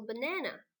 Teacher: We all know that the second syllable is the stressed syllable. So we have to write the stress symbol above letter A.